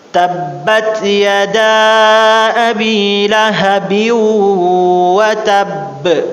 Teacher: huruf ba atasnya itu ada tasydid, maka dia akan masuk ke hukum qalqalah kubra